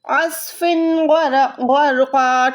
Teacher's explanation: غرقا، جب بھی دو زبر پہ دو زبر آتی ہے نا، اس کے بعد ہم وقف کرتے ہیں تو اس کو غرقن کی بدلے غرقا پڑھیں گے